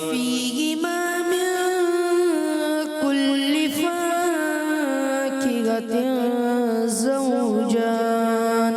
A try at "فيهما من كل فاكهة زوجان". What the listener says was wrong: فا کو ایک الف کھینچیں گے، زیادہ نہیں. جیسے فيهما من كل فاكهة زوجان.